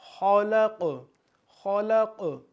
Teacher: خو جو ہے خو، یہ بھی حروف مستعلیہ ہے، تو اس کو ہم پر یعنی موٹا پڑھیں گے۔ خلق، خلق، قوف پھر اسی طریقے سے قلقلہ ہے، تو آواز کو ہم دوبارہ ریپیٹ کریں گے، یعنی کہ آواز ہماری ہمیں دوبارہ سنائی دے۔